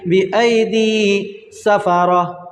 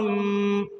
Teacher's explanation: 2 زیر کی تنوین کے بعد کیا آ رہا ہے، میم آ رہا ہے، یہاں پر کیا ہے، با ہے، تو اس لیے کیا کریں گے، تنوین کو میم سے بدل کر پڑھیں گے، ٹھیک ہے؟ اس کو اقلاب کہتے ہیں۔